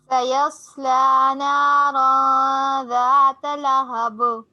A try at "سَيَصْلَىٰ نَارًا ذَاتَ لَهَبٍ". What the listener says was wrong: ماشاءاللہ گڈ.